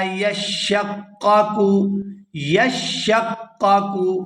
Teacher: ہار، منہ الانہار، وَإِنَّ مِنْهَا، وَإِنَّ مِنْهَا لَمَا يَشَّقَّقُ، یشقق، یہاں شین اور قاف ان دونوں کو سختی کے ساتھ ادا کیا جائے گا کیونکہ یہ مشدد ہے ، ان پر شد ہے۔ یشقق فیخرج منہ الماء، فیخرج منہ